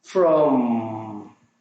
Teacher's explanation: El sonido de la M debe ser enfático, pronunciar la M pegando los labios. Luego que pega los labios, el sonido sigue sonando en la garganta, en el tubo de la garganta.